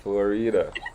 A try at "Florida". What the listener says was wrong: And when you say it, it sounds like Flora. Florida. Flora.